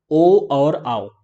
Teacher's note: आप देखेंगे कि ओ जो है वो हमारे कंठ से भी आ रहा है, और साथ ही साथ होठों के द्वारा भी थोड़ा सा इसका उच्चारण हो रहा है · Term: कंठोष्ठ